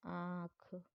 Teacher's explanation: मुख और नासिका दोनों के प्रयोग से बोले जाते हैं, उनको अनुनासिक कहते हैं।